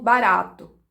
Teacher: A gente chama ele de TEP porque ele faz uma oclusão, mas é uma oclusão muito rápida, como se fosse um tapinha no céu da boca.